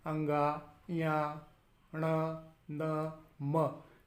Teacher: अनुनासिक वर्णों को जब उच्चारित किया जाता है तो इनके उच्चारण में नासिका का सहयोग लिया जाता है, और जब इन वर्णों का उच्चारण करते हैं तो नासिका थोड़ी सी सिकुड़ जाती है।